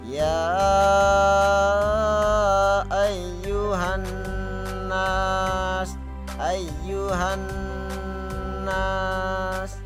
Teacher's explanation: Nah, kata ya ini dibaca 5 harokat ya. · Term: mad